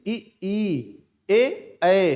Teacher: हमारी जीभ क्या है आगे की तरफ बढ़ रही है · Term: अग्र स्वर